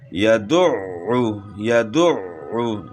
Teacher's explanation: عین کو اپنے مخرج سے ادا کرنا ہے، گلے کے درمیان سے ادا کرنا ہے